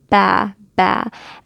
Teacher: And that separation between the two lips, the top and the bottom lip, is going to make our qalqala.